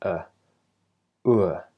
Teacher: begins with rounded lips in the same vowel position as the word cook and then slides into uh so the lips relax